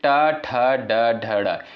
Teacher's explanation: इनका उच्चारण कहां से होता है भाई? मूर्धा से होता है। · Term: ट वर्ग